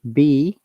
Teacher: When you are saying B, our two lips are touching together